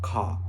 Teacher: So we're gonna talk about the Australian accent. Australian English is mostly non-rhotic. This means the R sound is not said unless the next word starts with a vowel.